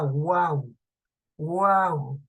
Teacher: Primero una vocal cerrada, una abierta tónica que va a estar al centro y una vocal cerrada, como el caso de la palabra guaura, en la sílaba guau, guau. Observen, vocal cerrada la U, vocal abierta tónica la A, suena con más fuerza, y la vocal cerrada U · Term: tritongo, triptongo